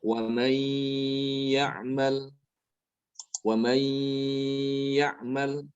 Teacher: Maka di sini nunnya dimasukkan ke dalam huruf ya disertai dengan gunnah. Dibacanya waman ya'mal. · Ada gunnahnya. Ketika mengucapkan ya, rongga hidungnya itu terbuka, ya. Rongga hidungnya itu dibuka sehingga dia itu terdengar suara gunnah atau dengung. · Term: idgham bi gunnah